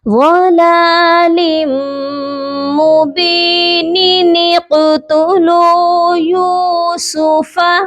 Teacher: جو نون قطنی ہے یہ زیر کے ساتھ ہوتا ہے اور اس نون قطنی کو ڈائریکٹ ہم نے قاف کے ساتھ ملا دینا ہے